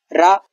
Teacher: रा मूर्धन्य व्यंजन है, जीभ की नोक तालु के पास जाती है, कंपन वाली ध्वनि है ये, अवर्गीय व्यंजन है रा व्यंजन, रा वर्ण।